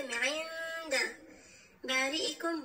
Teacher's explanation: بعد از نون ساکن حرف دال ذکر شده، اینجا اخفا صورت میگیره و غنه همچنان میکنیم